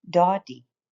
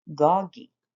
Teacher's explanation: Some of the children change the second sound to be like the first, doddy, and others change the first sound to be like the second, goggy.